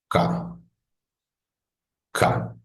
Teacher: se obstruye por completo hay una obstrucción por completo del aire que luego se apertura de un momento a otro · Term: oclusiva